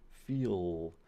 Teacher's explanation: But in feel, you still have that alveolar part to it. Feel, but the back of your tongue is curling up a little bit. Well, I shouldn't say curling, it's moving up a little bit. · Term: velarized L